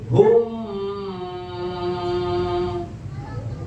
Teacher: Jadi bibirnya langsung rapat kedua bibir atas dan bawah. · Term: bibir rapat